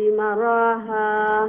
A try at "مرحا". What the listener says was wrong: short রাখবা